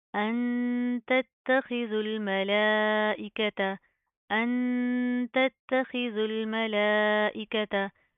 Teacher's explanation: लाम के ऊपर खड़ा ज़बर है, मद है, लंबा करेंगे, खींच कर पढ़ेंगे